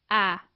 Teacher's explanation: Média, quando o fonema vocálico é emitido com a língua baixa, quase em repouso, A.